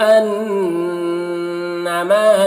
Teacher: انا نون مشدد غنہ کے ساتھ پڑھیں گے۔